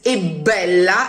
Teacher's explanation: in modern Italian, we would write it without the T, e bella, but we would pronounce it e bella as if the T was still there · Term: doubling